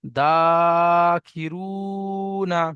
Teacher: আলিফের ডান দিকে জাবার আলিফ মাদ্দা, আলিফ মাদ্দাকে একালি পরিমাণ টান দিয়ে পড়তে হবে। পায়ের নিচে জের, জেরটি হলো হারাকাত, তাড়াতাড়ি পড়তে হয়, টান দেওয়া নিষেধ।